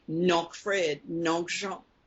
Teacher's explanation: That comes from mon oncle, my uncle. The N comes from the end of the word mon.